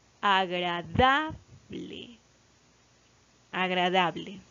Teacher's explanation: La sílaba tónica recae sobre la sílaba da.